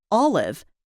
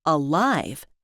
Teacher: the word olive has the stress on the first syllable, while the word alive has the stress on the second syllable